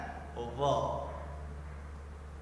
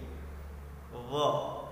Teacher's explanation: huruf dha tempat keluarnya itu ujung lidah bertemu dengan gigi atas kita · Cuman bedanya kalau dha bacaannya tipis, kalau yang dha bacanya lebih tebal dan dia sifatnya isti'la, yaitu mengangkat pangkal lidah kita ke atas sehingga bunyinya lebih menebal